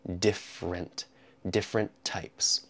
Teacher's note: that first e in different is completely removed